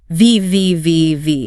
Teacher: Your bottom lip lightly touches your upper teeth, and you push air through that narrow gap, creating friction. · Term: labiodental fricative